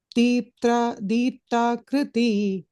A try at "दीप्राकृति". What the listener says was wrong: Prakriti. I'm hearing a ip and a tha. Di Prakriti. It's Di Prakriti.